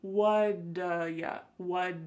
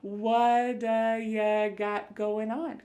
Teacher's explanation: that T at the end of the word what is going to change to a D sound. This is really typical of American English where a T that's surrounded by vowel sounds is going to change to a D. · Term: flapped T